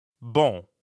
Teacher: Bon in bonjour is spelled B-O-N. But you don't pronounce that O-N the way you would in English. In fact, the N isn't really pronounced at all. Instead, practice saying O like the letter O in English, but purse your lips.